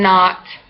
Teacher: low back rounded like in not